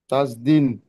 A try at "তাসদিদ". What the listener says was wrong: হুম দিম নয়। দ হস্যই, দ হস্যই দ, দ হস্যই দ, দিদ, তাসদিদ।